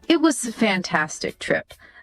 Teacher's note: That rise on fantastic, then the fall, it really highlights how good the trip was. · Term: rising falling